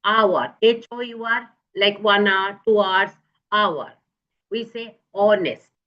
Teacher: in here, hour and honest, the H remains silent. The H sound doesn't come.